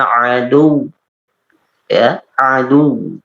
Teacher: posisi dalam keadaan agak mencucu ya dalam pembacaan adu karena dia berhenti di huruf dhammah waw